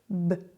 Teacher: si on fait vibrer les cordes vocales ça fait B donc B la bouche reste la même